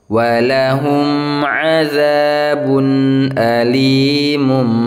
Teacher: jadi si huruf ba Ini dilebur ke seperti Huruf mim ya kan asal katanya Alimun Ya seperti suara nun sukun gitu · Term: iqlab